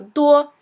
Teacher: first tone is a sort of flat High tone